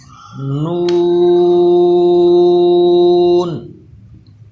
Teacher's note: اسی طرح نون، اکثر لوگ اس کو نون کر دیتے ہیں، یعنی ناک میں آواز لے جاتے ہیں، تو یاد رکھیے نون کی آواز بھی منہ سے آئے، ناک سے نہ آئے